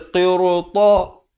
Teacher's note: ra di sini dibaca tebal kerana selepasnya datang huruf isti'la. Sebelumnya huruf qaf, selepasnya huruf ta.